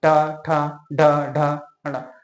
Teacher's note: मतलब जो मुंह का, उसको जैसे हम बोलते हैं ट, ट में हमारा जीभ क्या करता है? जो हमारा मुंह का ऊपरी हिस्सा उसको टच करते हैं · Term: मूर्धन्य व्यंजन